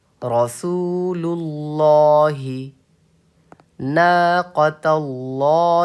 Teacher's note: لفظ اللہ کے لام کو پر پڑھیں گے. پر مطلب موٹا پڑھیں گے